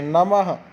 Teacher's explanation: विसर्ग का उच्चारण ह की तरह होता है और ह हम पूरा नहीं बोलना इसका आधा बोलना है · विसर्ग की जगह आप आधा ह मान के चलिए। जब हम इसको उच्चारण करेंगे तो ह का स्वर, हल्का ह का स्वर आना चाहिए।